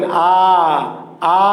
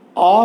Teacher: এই সারিও বিবৃত, এই সারিটাও বিবৃত, দুটো এই খোলা, খোলা, কিন্তু একটু পার্থক্য আছে। একটা বেশি খোলা আর একটা কম খোলা